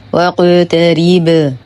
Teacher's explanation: القاف مقلقلة قلقلة صغرى وهي مفخمة نرقق الراء مع إتمام الكسر نقف على الباء بقلقلة كبرى